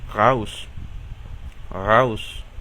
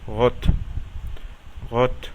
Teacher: El primero y el más común es como una R francesa, pero menos intensa.